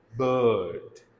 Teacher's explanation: ये जो R है, it is not pronounced in British accent